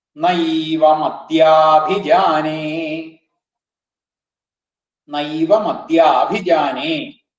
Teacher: നൈവമദ്യ എന്നും അദ്യ എന്നും അഭിജാനെ എന്നുള്ളതും കൂടുമ്പോ ദീർഘം വരും